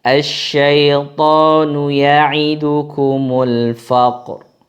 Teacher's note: Nah, kalau ada kata-kata seperti ini bagaimana, dan sebelum kata yang disukun ini berharokat fathah atau dhammah. Ini cara membacanya adalah dengan mentafkhim ra-nya.